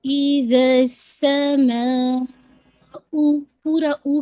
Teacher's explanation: آپ نے 4 to 5 count stretch کر کے پھر حمزہ کی ساؤنڈ کو پورا کمپلیٹ کرنا ہے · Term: مد الواجب متصل